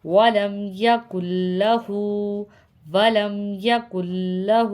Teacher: یہاں پر ہم کاف کو لام سے ملائیں گے، نون سے نہیں ملائیں گے کیونکہ یہاں پر لام پہ تشدید ہے